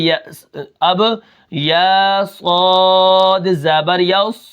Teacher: صاد کے اندر سیٹی ہے